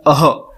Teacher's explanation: पर अः का उच्चारण भी जो है कंठ से होता है। तो यहां पे हमने लिखा भी है कि ये स्वर नहीं है बल्कि ध्वनि चिन्ह है। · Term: विसर्ग